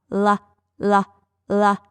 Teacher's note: my tongue is gliding under my hard palate and past my teeth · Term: l sound